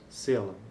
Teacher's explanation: A vogal tônica é é uma vogal média baixa anterior, não arredondada, que é seguida por um segmento alveolar, dental, lateral. O último segmento é a vogal média baixa central não arredondada, ou seja, o A, né? · corresponde a uma fricativa alveolar desvozeado, que é o segmento consonantal articulado no início da palavra